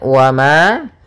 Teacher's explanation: mim berharakat fathha bertemu dengan alif maka dinamakan dengan mad thaii panjangnya dua harakat